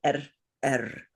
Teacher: The vowel, the sound of the vocalic R is softer.